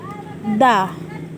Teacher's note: ujung lidah kita di belakang gigi atas, di belakang gigi seri atas